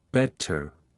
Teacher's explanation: Unlike American English, the T is pronounced crisply in British accents. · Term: T sound